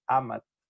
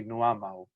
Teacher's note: amat, the T drops, and then you add this double W, amau